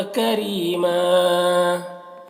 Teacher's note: کریمہ را کو باریک پڑھیں گے، یہاں پر یا مدہ ہے، اور وقف کی صورت میں ایک زبر کے ساتھ الف کو پڑھنا ہے۔